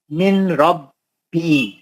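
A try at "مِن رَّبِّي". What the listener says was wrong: نون نہیں پڑھتے نا. پھر اب بھی آپ نون پڑھے نا، کیوں پڑھے؟ نون ساکن کا ادغام بلا غنہ حرف را.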